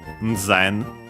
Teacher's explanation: voiced consonants, yeah, in Japanese, in classical Japanese, were actually also prenasalized, so it would be Nzen.